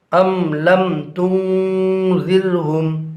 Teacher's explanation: यहाँ पर भी बा और मीम के अलावा हरफ लाम आ रहा है, लिहाजा मीम साकिन को ज़ाहिर करके पढ़ेंगे